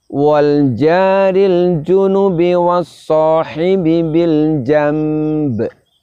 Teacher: kita rubah bunyi nun sukun nya menjadi Bunyi mim kemudian kita dengungkan bersamaan dengan itu kita juga keluarkan pantulan dari huruf ba simak